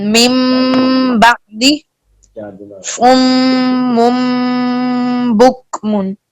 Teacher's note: نون ساکن اور تنوین کو میم سے بدل کر اخفا مع الغنہ کریں گے